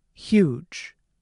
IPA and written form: hjudʒ (huge)